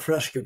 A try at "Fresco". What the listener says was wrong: Fresco, Not an E. I mean, A, it's Fresco, not Fresca. Fresca is a drink. It's F-R-E-S-C-O.